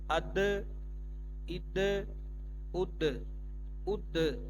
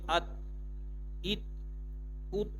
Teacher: جو پیچھے دوبارہ د کی آواز آتی ہے یہ حروف قلقلہ کی نشانی ہے